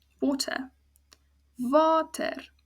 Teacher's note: the a is open ends on a vowel which means it's a long sound